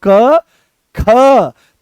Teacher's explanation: notice करो दोनों को एक साथ बोलो क ख तो जैसे ही ख बोलते हो तो पूरे कमर तक इसकी दम निकलता है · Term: महाप्राण